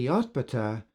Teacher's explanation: Note the dropping of the initial syllable so that Yotbatah becomes Tabete. This is a typical phonetic phenomenon which we discussed in part 1 of this video series.